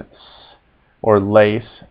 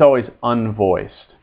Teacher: s is always hard as in s or lace never like Z that is it's always unvoiced